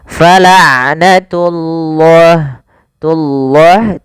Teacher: pada lafal ain sifat bainiyah tidak terlalu ditahan suara ainnya dan tidak terlalu dilepaskan. Fala'natullah tullah, tunya jangan tebal, jangan fala'natullah enggak, tapi dia fala'natullahi baru lafal Allahnya tebalkan.